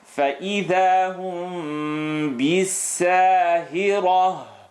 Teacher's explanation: Ra heavy, stereo sound at the end.